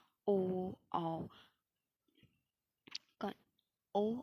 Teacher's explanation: अ को कंठ से बोला जा रहा है और उ को ओठ से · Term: मिश्रित उच्चारण स्थल